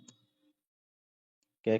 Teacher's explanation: क के साथ आ भी सुनाई देता है। जैसे ये है ना क उच्चारण करेंगे हम तो क के साथ में जो है हमें पता चलेगा अ भी होता है।